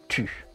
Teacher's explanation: les lèvres sont en avant la bouche est un peu ouverte et arrondie la langue est en avant elle touche les dents du bas le corps et la bouche sont tendu U est un son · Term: le son U